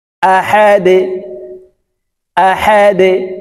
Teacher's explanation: দাল হরফ নিচের দিকে ধাবিত করে কলকলা করে উচ্চারণ করতে হবে।